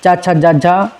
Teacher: चा छा जा झा स्पर्श संघर्षी हैं